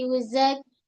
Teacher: Pada kaf terus tahan suara zak bersifat syiddah. Kemudian ki dua harakat mad asli.